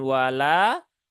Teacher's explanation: lanya ada alif ya. Setelah fathah maka dia dibaca dua harokat ya. Nunnya juga sama, dia huruf yang tipis maka terbaca dengan na ya, bukan no, no ya.